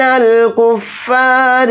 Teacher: را کو باریک پڑھیں گے کیونکہ را کے نیچے زیر ہے. ضاد کو موٹا یعنی پر پڑھیں گے.